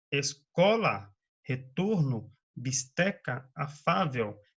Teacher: Palavras cuja sílaba tônica é a penúltima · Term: Paroxítonas